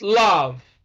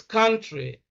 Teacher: the central sound that lies in the center between ah and o